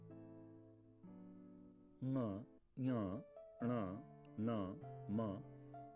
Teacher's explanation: ङ, ञ, ण, न, म नासिका के स्पर्श से निकलने वाली ध्वनियां हैं। इनको अनुनासिक कहते हैं।